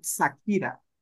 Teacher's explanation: españoles hasta el día de hoy no pueden pronunciar la sh